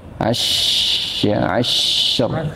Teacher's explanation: Sya-nya ditahan dulu, namanya sifat rokhawah, mengalirnya suara dan udara.